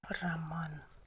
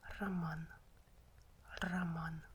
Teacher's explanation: But when O is unstressed, O is pronounced as A. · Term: weak short a